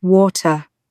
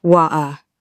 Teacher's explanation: Cockney speakers often drop the T entirely, so you get wa'a.